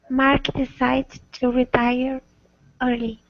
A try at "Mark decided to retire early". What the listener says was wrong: Okay, so and also you need to make sure that you stress the ed here. So Mark decided to retire early.